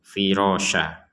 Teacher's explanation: Ketika kita berhenti di kata firasa, maka tanwin atau dommatain ya, dua dommah ini kita baca satu firasya karena kita berhenti di kata ini.